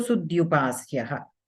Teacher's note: as per jashtvam, the mahaprana dhakara becomes alpaprana dhakara